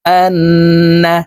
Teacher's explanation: হইলে সর্ব অবস্থায় না বাসি থেকে গুন্না করিয়া পড়িতে হয় তো আমরা এই হামজা তাশদি নুনের সাথে গুন্না সহিত পড়বো